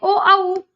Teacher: ए आई नहीं गोल हुआ, लेकिन अगर बात कहें ओ औ तो ओंठ गोल हो जा रहे हैं, ओ औ में ओंठ गोल हो रहे हैं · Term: व्रतमुखी